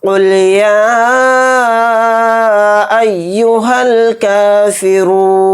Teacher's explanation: نون کو ساکن کر کے پڑھیں گے کیونکہ یہاں پر آیت ہو رہی ہے حالت وقف میں، نون ساکن ہوگا۔